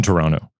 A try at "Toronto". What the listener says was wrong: Just, you don't hit the T.